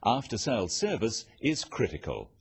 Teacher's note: Note the downward intonation at the end of sentences.